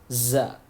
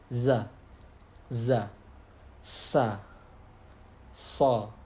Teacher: ujung lidah yang bertemu dengan gigi seri bawah. Kalau tadi bertemu gigi seri atas, sekarang bertemu gigi seri bawah.